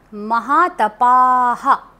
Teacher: जब विसर्ग आता है एंड में और वहां पर आ की मात्रा होती है जैसे महा तपा तो हम उसको महा तपः नहीं बोलेंगे